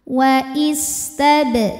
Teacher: Wa'istab. Huruf ba sukun hukumnya qalqalah sughra. Sebab ada huruf qalqalah yang sukunnya asli dan ada di tengah bacaan.